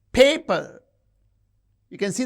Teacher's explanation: You can see the first syllable is stressed.